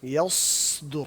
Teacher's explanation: یا باریک ہوتا ہے یا, اور صاد موٹا ہوتا ہے صا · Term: باریک حرف اور ایک موٹا حرف